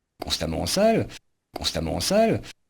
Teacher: And what they're doing, they're not making a stop in the middle like we would call a glottal stop in English, but there's like a little extra push of air to push out the second vowel that has the same sound.